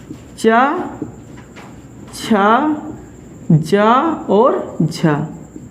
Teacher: तो जो चा वर्ग का जो है प्रथम 4 वर्ण होते हैं, चा, छा, जा, झा, ये स्पर्श संघर्षी व्यंजन होते हैं।